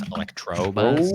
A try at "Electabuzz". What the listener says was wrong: Electabuzz. There's no R.